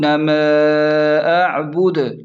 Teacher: میم الف زبر ما، یہاں پر مد بھی ہے تو میم کو 3 الف کی برابر کھینچیں، یہ مد منفصل ہے، متصل نہیں ہے۔